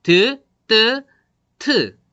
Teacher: 지금 혀 끝이 잇몸과 맞닿아서 공기를 막는 거죠. · 나오는 공기를 지금 이 혀가 힘이 들어가요. 혀하고 이 잇몸하고 딱 맞닿아서 공기를 막고 있거든요. 그걸 잇몸 소리라고 합니다.